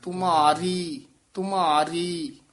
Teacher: ਰੀ ਨੂੰ ਭਾਰਾ ਨਹੀਂ ਕਰਨਾ ਮਾ ਮਾ ਨੂੰ ਭਾਰਾ ਕਰਾ